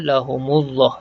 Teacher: Hukum lam mati pada kalimah Allah, lam ni dibaca dengan tebal sebab baris yang terakhir yang kita jumpa ialah baris depan, lahumu. Maka lam ni dibaca tebal, lahumullah.